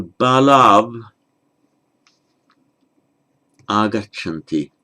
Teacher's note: So and also the sandhi with a final au, So the two boys, balau, where you have a vowel following a final au, that final au becomes av